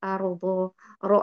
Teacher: ini dibaca tafkim dibaca tebal dibaca te karena sebelumnya ada yang berharakat fathah